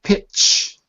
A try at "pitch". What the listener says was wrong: That's P, not B.